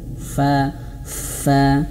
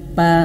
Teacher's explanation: Fa fa bukan pa bukan dua bibir berjumpa pa tapi fa bibir bawah menyentuh gigi seri atas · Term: huruf fa